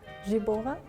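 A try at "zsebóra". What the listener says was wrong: Not J. J. Jabura.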